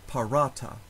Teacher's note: In the word parata, the second to last syllable has a long vowel, long A, so that syllable receives the stress